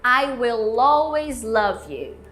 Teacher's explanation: Agora o L de will e de always, ele tá aqui mais pra trás. E lembrando que você pode conectar o will com always.